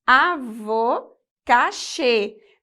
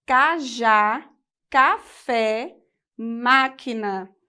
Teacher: Perceberam que a entonação da voz ficou fechada, o, e. Então, acento circunflexo, a entonação é fechada e no acento agudo a entonação é aberta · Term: timbre fechado